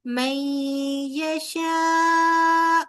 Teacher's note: الف مدہ کے بعد حمزہ اسی کلمہ میں ہے، مد واجب متصل 4 کاؤنٹس لمبا کیا جائے گا